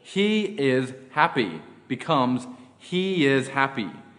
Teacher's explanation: When the vowels e, I, a, I, and oi are followed by a vowel in the second word, a y sound, y, is inserted in order to smooth over the transition.